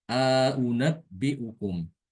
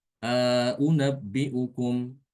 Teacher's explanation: Jadi hamzah yang kedua ditahqiq, tidak ditasil. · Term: idkhal